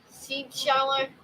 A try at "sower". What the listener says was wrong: It's a seed sower, not a seed shower. Well, I guess it could be a shower of seeds. Seed sower. Sower. You're sowing the seeds. You're sowing the seeds.